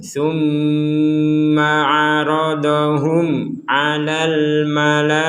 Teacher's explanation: Mim sukun bertemu ain kita baca jelas tidak boleh dengung.